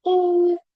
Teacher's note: कलकला का जो साउंड है वो काफ के अंदर बिल्कुल क्लियरली आएगा